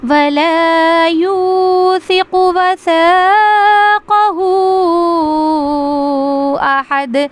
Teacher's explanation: اس کے بعد ہے وَلَا يُوثِقُ، یا واو پیش یو، اس کو ہم کھینچیں گے واو مدہ کو، اور ثقو قاف کو جلدی پڑھیں گے، وَلَا يُوثِقُ وَثَاقَهُ احد، یہاں پہ مد منفصل ہو رہا ہے اور یہاں پہ قلقلہ ہو رہا ہے، احد، وَثَاقَهُ احد، قلقلہ آواز باؤنس ہو رہی ہے.